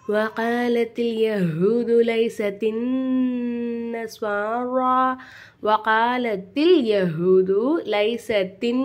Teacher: நூனுக்கு மேலே சத்து செய்யப்பட்டனால இந்த நூன் நம்ம நல்லா அழுத்தி உச்சரிக்கணும்.